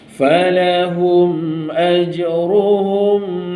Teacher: falahum ada tanda mati, dia jumpa hamzah, tak dengung